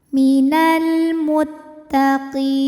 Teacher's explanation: Karena alif lam menghadapi huruf qamariah yaitu mim, maka lam kita bunyikan dengan jelas atau biasa disebut dengan izhar qamari.